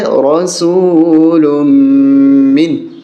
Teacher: جاءکم رسول من، یہاں را کو موٹا کریں گے، رسول من، یہاں میم مشدد پہ غنہ ہوگا، نون ساکن پہ غنہ نہیں ہوگا